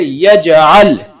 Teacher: قلقلہ کے 5 حرفوں میں سے جیم آیا ہوا ہے تو یہاں قلقلہ ہوگا اور ایک لوٹتی آواز سنائی دے گی · قلقلہ کے 5 حرفوں میں سے جیم آیا ہوا ہے اور اس کے اوپر جزم ہے یعنی سکون ہے اس لیے یہاں قلقلہ ہوگا اور ایک لوٹتی آواز سنائی دے گی